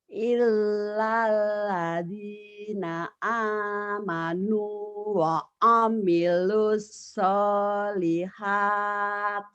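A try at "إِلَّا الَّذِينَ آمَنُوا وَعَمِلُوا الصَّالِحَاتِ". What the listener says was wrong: Bagus. Tinggal Bu, tinggal shotnya aja Bu. Nih, wa amilus. Mute-nya kurang.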